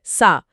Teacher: सीन में तेज सीटी है